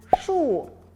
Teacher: pengucapannya sama seperti es tapi lidahnya juga ditekuk